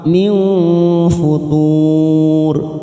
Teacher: nun sukun bertemu fa. Ikfa ausat kita samarkan 3 ketuk